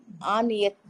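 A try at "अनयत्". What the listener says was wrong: అనయత్ అనయత్ ఆకి దీర్ఘం ఉండదు. అనయత్ ఆ దీర్ఘం ఉండదండి. అనయత్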